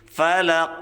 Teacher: kita pantulkan dengan kuat karena ini ada huruf Qalqalah ya Ada sifat Qalqalah itu memiliki sifat Qalqalah artinya harus kita